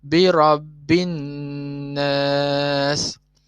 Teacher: Kat bi rabbi ni cepat je. Tapi an-nas ni dua harakat kan. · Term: wajibul gunnah